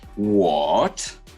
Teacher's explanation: We go to the lower part of our voice and then we raise our tone. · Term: third tone